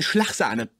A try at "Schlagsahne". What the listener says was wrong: Es klingt seltsam bei dir. Warum sprichst du das G wie Ch aus? Sag Schlag.